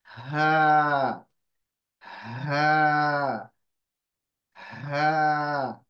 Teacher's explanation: ह में क्या होगा आपकी जो हवा है वो मुंह में से पास होगी वाइब्रेशन होगा वोकल कोर्ड का और हवा पास होगी इसमें कोई दबाव नहीं है आराम से आहिस्ता से आप ह की आवाज निकाल सकते हैं